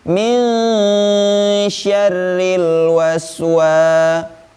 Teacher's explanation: Nah, di sini huruf wawnya ada tanda alif dan di sini huruf alif termasuk huruf mad. Maka wawnya itu dibaca panjang 2 harokat